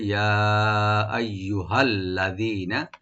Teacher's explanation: এবং 29 নম্বর আয়াত যেটা, আল্লাহ তাআলা অন্য একটা বিধান হিসেবে এখানে রব্বুল আলামিন বর্ণনা করেছেন, ইয়া আইয়ুহাল্লাযীনা, ইয়াটাকে আমরা 3 আলিফ পর্যন্ত টানবো, এখানে মধ্যে মুনফাসিল। আইয়ু হামজাকে রাইট দিয়ে ইয়াটাকে ডাবল করে পড়বো, আর হা লামের সাথে মিলে পড়া হবে